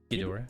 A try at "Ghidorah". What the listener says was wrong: No, Key. You're saying Gi. Yeah, you're saying Gi. It's not. It's like Kador or Kidor, but it's not Gi.